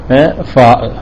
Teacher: ഫാഹ് ഉച്ചരിക്കുന്ന സമയത്ത് നമ്മുടെ താഴെ ചുണ്ടും മേലെ മുൻപല്ലിന്റെ തലയും കൂടിയാണ് തട്ടുന്നത് എന്തല്ല രണ്ട് ചുണ്ടുകളല്ല തട്ടുന്നത് താഴെ ചുണ്ടും